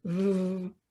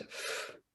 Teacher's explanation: begin to make the V sound, v, and then as you continue to make it, stop using your vocal cords, but don't change your mouth position. You'll find that you are now making the sound for F.